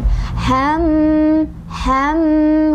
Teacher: Kita ingat-ingat bahwa mim ketika bertasydid masuk huruf gunnah. Artinya cara bacanya gunnah itu artinya dengungan. Jadi didengungkan sebanyak 2 ketukan.